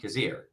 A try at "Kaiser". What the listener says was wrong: Kaiser. Yeah, it's Kaiser. You pronounce the Y.